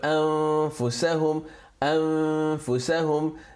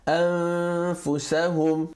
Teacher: You place your tongue preparing to pronounce the next letter already, as if you are going to pronounce fa, but you try and pronounce noon with it. So the noon sound is still present while the tongue and the mouth is shaped to pronounce the next alphabet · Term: half merger